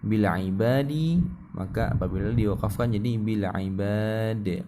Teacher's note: Apabila diwakafkan maka dal disukunkan. Bila ibadi maka apabila diwakafkan jadi bila ibad ya.